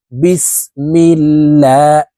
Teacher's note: আল্লাহ শব্দের আগের হরফে জের থাকার কারণে এই লামকে লা অর্থাৎ পাতলা ভাবে পড়তে হবে